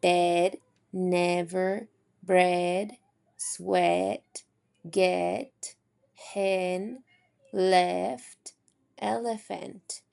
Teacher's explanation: My tongue is in the middle front and it glides up towards the e sound. And this is also considered a lax vowel phone. · my lips are slightly spread when I am creating that e sound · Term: eh sound